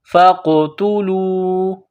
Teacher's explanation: نقطوں والا بڑا قاف ہے، اس کو موٹا کرنا ہے، قاف کے اوپر قلقلہ کریں گے ، فا قاف زبر فق، تا پیش تو، فقتو، لام واو